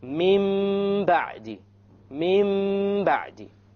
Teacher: We change the noon into a meme, and we perform a ghunnah on it. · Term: iqlab